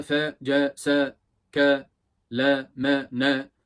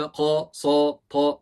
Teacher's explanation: Ne u'ya yakın ne Oya yakın ne de iye yakın yani fetha hep aynı